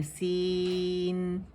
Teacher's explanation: تو سین, تو اس کو ہم نے کیا کرنا ہے, 4 کاؤنٹ اسٹریچ کرنا ہے. ٹھیک ہے, اور جو نون آخر میں آ رہا ہے اس کی آواز کو 1 کاؤنٹ کے لیے شو کرنا ہے